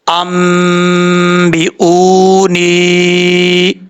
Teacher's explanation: واو مدہ ہے، ایک الف کی مقدار اس کو لمبا کر کے پڑھا جائے گا